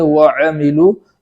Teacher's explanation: وَعَمِلُوا کے اندر عین کو اس طریقے سے ادا کریں کہ وہاں حمزہ کی بو نہ ہے